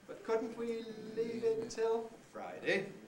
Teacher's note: does it go up no it doesn't does it go down no it doesn't it stays level and it's high